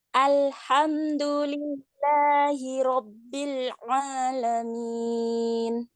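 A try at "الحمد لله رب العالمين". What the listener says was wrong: Tinggal nanti dikonsistenkan aja panjang di belakangnya itu ya Bun, ketika satu ayat kita berhenti.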